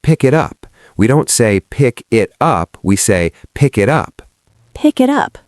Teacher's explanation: It truly does sound like a single, elongated word. Exactly. This is what we call linking.